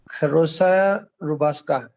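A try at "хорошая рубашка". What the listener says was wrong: खरोशया रुबाशका, ठीक है एकदम, वेरी गुड।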